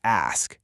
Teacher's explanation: You got to ensure the S sound comes strictly before the K to make it ask.